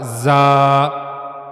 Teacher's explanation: जबान की नोक और ऊपर के जो अगले दो दांत हैं उनका जो अंदरूनी हिस्सा है अंदर की तरफ वाला उनके दरमियान थोड़ा सा फासला रहना चाहिए। जबान की नोक जाकर ऊपर के दांतों के अंदरूनी हिस्से से मिलनी नहीं चाहिए। · زبان کی نوک اور اوپر کے جو اگلے دو دانت ہیں ان کا جو اندرونی حصہ ہے اندر کی طرف والا ان کے درمیان تھوڑا سا فاصلہ رہنا چاہیے. زبان کی نوک جا کر اوپر کے دانتوں کے اندرونی حصے سے ملنی نہیں چاہیے، درمیان میں تھوڑا سا فاصلہ رہنا چاہیے، وہاں سے زا ادا ہوگا زا. اور ایک اور چیز جس کا خیال رہے کہ زا کو ادا کرتے ہوئے آواز میں سختی ہونی چاہیے.